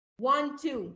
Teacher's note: ما قلتش 2 تي، انا قلت تي واحده